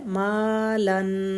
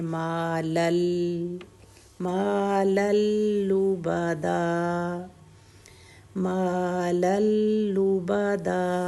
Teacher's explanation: أهلكت مالا لبدا، مالن ہے مالن، تو وہ جو نون ساؤنڈ ہے اوپر بتایا نا، جب نون ساؤنڈ کے بعد لام آ جائے تو وہ نون ساؤنڈ ختم ہو جاتی ہے. مالن نہیں پڑھیں گے، مالل مالل لبدا مالل لبدا.